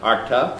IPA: ɑʈɑ